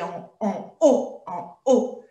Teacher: c'est ce qu'on appelle un H aspiré. On ne fait pas la liaison